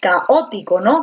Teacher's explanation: tú dices caótico con la fuerza de voz en la o